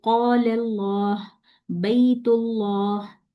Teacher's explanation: ता बारीक है लेकिन लाम जो है वो इसमें जलाला है, तो यहाँ पे हमने लाम को मोटा पढ़ना है